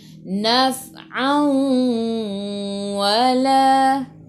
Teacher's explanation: Ni adalah idgham ma'al gunnah, kena masuk dan dengung 2 harakat.